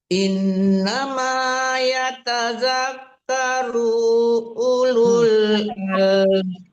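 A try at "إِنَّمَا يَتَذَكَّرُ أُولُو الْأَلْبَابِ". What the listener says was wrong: Kenapa U lagi dipanjangkan? Ibu kurang teliti deh. Domah itu pada waw mati baru panjang, domah kebalik baru panjang, dua itu aja tanda domah boleh dipanjangkan ya.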